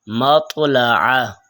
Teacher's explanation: تا دو نقطوں والا، اس کی آواز باریک ہوگی، جیسے یتلون۔ اور طا اس کی آواز موٹی ہوگی